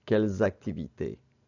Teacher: the reason why it's pronounced calles is because the next word begins with a vowel sound